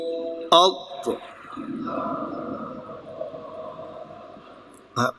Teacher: حمزہ زبر ضاد اض، پر کیجئے نہیں تو دال بن جائے گا